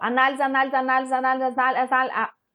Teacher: Se eu falar rapidinho, vocês vão observar que o na ele vai ficar em destaque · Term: sílaba tônica